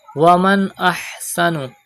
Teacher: Pronounce ha from the middle part of your throat.